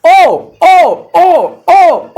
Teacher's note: ओ जो होता है वो कंठ प्लस ओष्ठ की मदद से हो जाएगा। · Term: कठोष्ठ